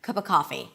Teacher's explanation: I actually reduced the of to So not only I reduced the ah sound to a schwa, but I also dropped the V completely. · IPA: ə